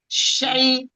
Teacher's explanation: Makhraj huruf shin ada di fasatol lisan atau tengah lisan, hampir menyentuh langit-langit atas. Sifatnya al-hamas mengalir nafas, ar-rohlah mengalir suara, al-istifal lidah terhampar sehingga merupakan huruf yang tipis, al-infitah lidah terbuka, al-ismat huruf yang sulit untuk diucapkan.